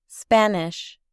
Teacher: Observe que sh se pronuncia como una ch suave.